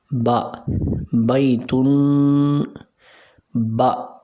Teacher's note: با دونوں ہونٹوں کے جو تر حصہ ہے یہ آپس میں دونوں ملیں گے تو وہاں سے با ادا ہوگا